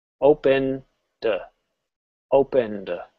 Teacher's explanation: Notice I didn't say ed at all. We're just softly pronouncing or saying the d. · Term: voiced d sound